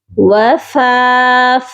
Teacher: وفاكهة مما يتخيرون. وفا، فا کو ایک الف کے برابر لمبا کریں گے